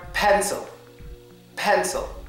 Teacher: Pencil. Well, yes, the schwa sound is on the I because I'm saying pencil.